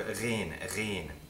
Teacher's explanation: It's not as far back as that. You don't trill the uvula when you pronounce a ghain.